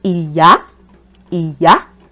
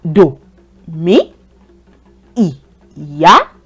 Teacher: See, do is the low tone. Mi is the high tone. Do is the low tone, traveling low.